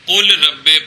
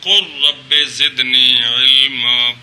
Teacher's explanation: کیا اگر را لام ساکن غیر تعریف کے بعد واقعہ ہو تو لام کو را کی جنس کرنا بھی واجب ہے اور جنس کا جنس میں ادغام کرنا بھی واجب ہے